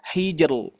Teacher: huruf jim yaitu mempunyai sifat qalqalah. Maka kita pantulkan saja dulu hija tinggal masukkan ke ro.